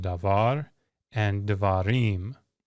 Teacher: So, davar, if you make it a plural and put im on the end, the accent was originally here. When you put the ending on, the accent pulls toward the end. It shifts. And it makes you have to get through the first part of the word quicker. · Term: accent shifts